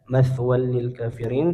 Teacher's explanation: Tanwinnya melebur ke huruf lam tanpa gunah atau tanpa ditahan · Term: idgham bila gunah, idgham bila gunnah